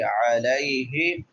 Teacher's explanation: ہا بڑی ہا ہے، اقصا حلق سے، حلق کے آخری حصے سے